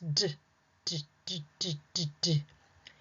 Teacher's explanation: The D sound does not make duh.